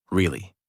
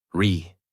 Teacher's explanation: Voice rises and falls.